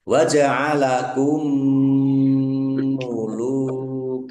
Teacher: Mim sukun bertemu dengan huruf mim. Idgham mutamasilain atau idgham mimi ya. Dibaca mendengung mim ya. Ditandai ada ditahan biar tampak mendengungnya.